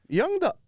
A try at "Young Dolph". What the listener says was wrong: Sound like you're saying John.